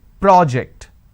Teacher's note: When I'm stressing on the first syllable, say for example, I'm stressing on this particular syllable, the first syllable, which is pro, that becomes a noun